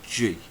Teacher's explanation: tongue against the soft pallet and release a short burst of air we get the sound G which is therefore a Velar plosive